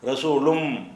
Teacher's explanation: இன் என்ற உச்சரிப்புக்கு அப்புறம் மீம் வந்துச்சுன்னு சொன்னா இன் என்பது இம்மாக மாறிக்கிடும்.